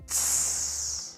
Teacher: So instead of saying zi, zi, zi, zi, there's a voice throughout the whole thing. With the CI, it's unvoiced, so it's tss.